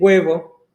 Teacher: Então, observem aqui, a gente tem a palavra huevo, que tem um ditongo E, só que ao invés de ser mudo o H, é como se ele fosse substituído por um G